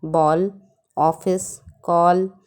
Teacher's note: यह अंग्रेजी प्रभाव के कारण इसकी गिनती स्वर में भी की जाने लगी है। यह आ और ओ के बीच की ध्वनि है, जिसे आगत ध्वनियाँ कहते हैं।